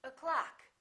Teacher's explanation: The first syllable is reduced. The second syllable is stressed. So this one disappears and becomes this sound, So we say o'clock.